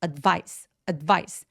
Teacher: advice 아니고 advice. 첫 번째 음절은 강세를 주지 않기 때문에 힘을 쫙 빼주시는 게 필요해요.